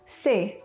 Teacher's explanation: three is medium tone C just flat in the middle